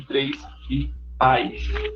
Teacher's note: Nas palavras monossilábicas terminadas em sibilantes, como três, pais, nas quais, em certos falares do português brasileiro, ocorre a ditongação, transformando-se em três e pais.